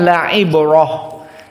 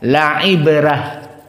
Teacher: Apa hukumnya rnya dalam keadaan murqoqoh karena qidah dari usul Wars ro meskipun fathah kalau sebelumnya sukun maka di sini dia dalam keadaan tarqik